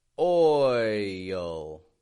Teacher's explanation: Notice I'm not just going oil, oil, but I'm rather stretching out before the L and oil. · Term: dark L